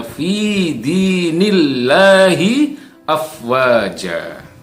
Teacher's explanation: ada Allah lafzul jalalah yang sebelumnya ada huruf yang bertanda kasrah, maka dibaca tarkik atau dibaca tipis